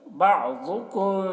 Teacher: امین بعضکم، ضاد کو پر پڑھیں گے کیونکہ ضاد حروف مستعلیہ میں سے ہے۔ میم ساکن کے بعد یہاں پر با ہے، تو میم کو با سے ملا کر غنہ اخفا کے ساتھ پڑھیں گے، اس کو کہتے ہیں اخفاء شفوی۔